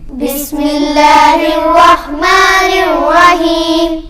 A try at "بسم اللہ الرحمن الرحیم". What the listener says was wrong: بسم اللہ کا سین نہیں ہلنا چاہیے. بسم اللہ الرحمن الرحیم. بسم اللہ کا لام جو ہے باریک پڑا جائے گا. الرحمن الرحیم کا را بھی پر پڑا جائے گا، موٹا پڑا جائے گا، اور ہا حروف حلقی ہے، اس کو حلق میں سے ادا کریں گے.